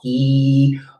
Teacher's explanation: you make an E sound, and so your tongue is balled up high back in the back of your mouth. E, hold the E and turn that into an N.